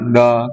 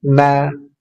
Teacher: Nun ujung lidah dengan gusi dua gigi seri atas. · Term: tarqiq